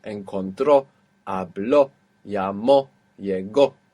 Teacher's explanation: Yes, because it's breaking the rule. We're ending in a vowel and we have the accent on the end.